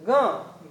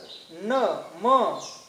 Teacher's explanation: तर ग ग म्हणल्यानंतर बघा मुखातून सुद्धा उच्चारण करावं लागतंय किंवा मग माफ करा मुखातून आणि नाकातून दोन्ही अवयवातून याचा उच्चार होतो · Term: अनुनासिक व्यंजन